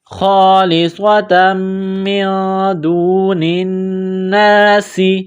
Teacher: دال ہے، حروف اخفا ہے، غنہ کریں گے، خالصۃ من دون، نون کو نون کے ساتھ ملانا ہے، نون مشدد ہے، غنہ کریں گے ، خالصۃ من دون الناس، سین میں سیٹی کی آواز پیدا · سین میں سیٹی کی آواز پیدا کریں گے